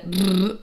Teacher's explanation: the technical term for my personal favorite sound, the brr, is a voiced bilabial trill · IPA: ʙ